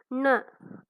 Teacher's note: நாவின் நுனி மேல் அன்னத்தின் முன்பகுதியை தொடுவதால் நகரம் பிறக்கிறது